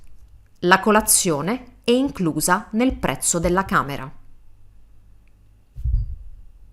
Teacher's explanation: my voice is flat and that means it's a statement